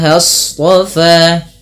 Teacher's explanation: shad itu pangkal lidahnya terangkat dengan memiliki sifat yang namanya sifat isti'la. Ya, isti'la, dan dia juga idbaq.